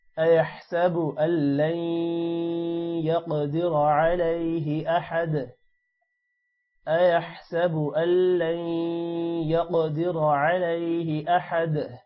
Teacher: قاف موٹا ہوگا اور قاف پر قلقلہ بھی ہے اور را بھی موٹا ہوگا